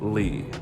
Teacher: you're gonna drop your voice till your voice almost cracks, and all you women's that can do it too until it almost cracks are just super low, li, okay? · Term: third tone